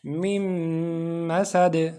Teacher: من میں جو نون ہے اس نون کی آواز ختم ہو جائے گی اور میم میں مل جائے گا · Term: ادغام